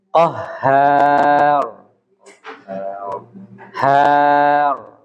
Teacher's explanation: jadi h-nya tipis yang tebal itu rnya